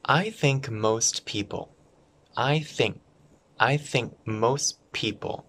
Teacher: the k and m connect and t and p connect